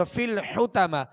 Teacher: اور فی الحتمہ حا اور طا، حا کو وسط حلق سے ادا کریں گے اور طا کو پر پڑھیں گے